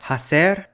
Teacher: There are certain varieties of Spanish where they pronounce the H in words when it was historically a fa sound, so hacer gets said as hacer since it came from Latin facere with an F.